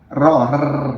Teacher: Jadi kalau ro itu yang benar adalah ro-nya itu bergetar di ujung lidah. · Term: huruf ro